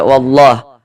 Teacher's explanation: ditebalkan lam jalalahnya dibaca tebal dibaca tabkhim